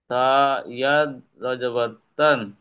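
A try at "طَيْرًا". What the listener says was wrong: ইয়ামাদ নয়, এটা ইয়ালিন। ডান দিকে জেড থাকে তখন ইয়ামাদ হয়, আর যখন উপরে জবর থাকে তখন ইয়ালিন পড়তে হয়। এই ইয়ালিন কিভাবে পড়তে হয় পড়েন।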